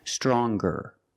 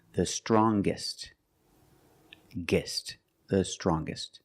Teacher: When we change these adjectives with e r or with est t, we're going to pronounce the g sound, the hard g.